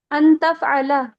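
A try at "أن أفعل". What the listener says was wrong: अफ़अला बोल रहा हूँ, आप तफ़अला कर दे रही हैं। अफ़अला अफ़अला, इतना खराब मखरज नहीं है मेरा।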